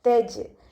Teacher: ഇവിടെ ജീമും കൽക്കലയുടെ ലെറ്ററാണ്, അപ്പോൾ സുക്കൂനായതുകൊണ്ട് നമ്മൾ ഫുൾ സുക്കൂന് കൊടുക്കുക. തജ്രി. കെസ്ര ആയതുകൊണ്ട് നമ്മൾ താഴ്ത്തി വെച്ചിരിക്കും.